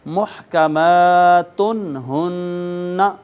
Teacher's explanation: حروف اظہار میں سے ہا آ گئی، اس کو اب نون تنوین کو بغیر آواز چھپائے فقط ظاہر کریں گے اور یوں کہیں گے محکمات ہن، تن ہن کہنا غلط ہے، نون تنوین کو اظہار کر کے پڑھیں گے۔